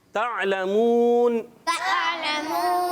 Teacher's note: आइन हलक के दरमियान वाले हिस्से से अदा होता है, और अच्छे तरीके से हमज़ा ना हो जाए। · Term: हुर्फ हल्की